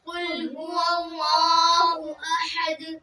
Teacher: ہا حلق سے ادا کرنے کے بعد آپ دال پہ قلقلہ کریں